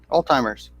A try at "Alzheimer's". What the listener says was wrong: It sounds like you're pronouncing a D in there.